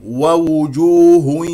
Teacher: لا تنسى ضم الشفتين في كلمه وجوه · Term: الواو المضمومه